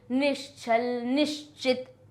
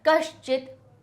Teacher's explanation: क्योंकि च और छ की ध्वनि तालू से निकलती है और श की भी तालू से निकलती है